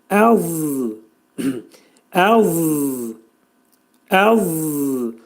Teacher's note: Za hərfinin məxrəci dil yuxarı damağa doğru qalxaraq za hərfini deməliyik